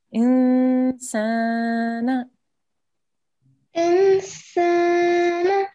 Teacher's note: So we need to hold this nasal sound for 2 seconds. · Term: soft nasal sound